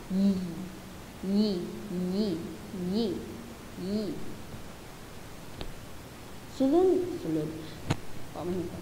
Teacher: Sunod naman ay ang palatal. Lumalapit o dumidiit sa matigas na bahagi ng ngala-ngala ang ibabaw ng punong dila. So, ito na yung letrang Y na yi, yi, yi, yi, yi.